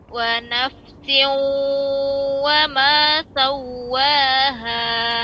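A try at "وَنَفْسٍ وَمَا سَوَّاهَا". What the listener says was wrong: Nah, seperti ini beda Ibu dengan yang tadi.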